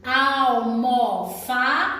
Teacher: a sílaba mais forte é a penúltima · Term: paroxítona